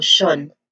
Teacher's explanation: It has a schwa sound, which means that the vowel here is weak and, of course, not stressed. So that's the final syllable.